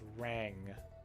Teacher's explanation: You can hear the little G sound at the end, the soft G sound. Try it one more time.